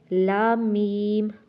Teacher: لام میم پڑھتے ہوئے ناک میں آواز نہ جائے